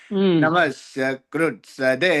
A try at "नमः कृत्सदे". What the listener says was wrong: అదే నా మత్స్య అన్నట్టుగా నాకు వినబడింది.